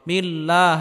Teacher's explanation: আল্লাহ শব্দের পূর্বে যদি জের হয় তাহলে আল্লাহ শব্দকে চিকুন করে পড়তে হবে